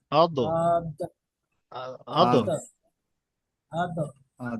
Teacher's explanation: জি, সোজাসুজি, তার বরাবর। বরাবর উপরে মাড়ির দাঁতের গোড়ার সাথে লাগিয়ে উচ্চারিত হয় দদ